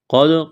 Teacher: قاف کو موٹا کرنا ہے، دال ساکن ہے، قلقلہ کریں گے دال پر۔ پہلے بتلا چکے ہیں کہ 5 حروف قاف طا با جیم دال، جب ان 5 حروف پر جزم آ جائے یعنی یہ دال نما مڑی ہوئی شکل، تو ایسی صورت میں ان پہ قلقلہ کریں گے۔